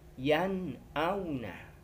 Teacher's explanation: Huruf nun sukun bertemu dengan hamzah. Nun sukunnya harus dibaca jelas dan terang. Tidak boleh ada suara dengung sedikit pun. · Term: idhar halqi